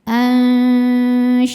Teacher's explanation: tengah lidah sudah menyentuh langit-langit tengah tapi tidak menekan. Menghasilkan suara yang keluar dari mulut dan aliran suara yang masuk hidung sama besar. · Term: ikhfa hakiki awsat